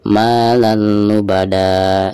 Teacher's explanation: Perhatikan di atas lam ada tanwin fathah tain lalu berhadapan dengan huruf idgham, di sini huruf lam. Maka cara membaca tanwin yang ada di atas lam tersebut itu harus dimasukkan ke huruf lamnya ya, yang ada di depannya tanpa gunah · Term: idgham bila gunah